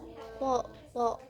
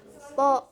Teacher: Thmus itu tidak bersuara. Th di pita suaranya itu tidak bersuara. Th. Kemudian di longgam mulutnya itu ee di longgam mulutnya itu tebal. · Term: huruf th